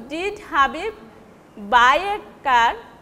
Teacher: that means you are giving emphasis on buy. Your question is for buy, that is the person has the person bought or borrowed that car.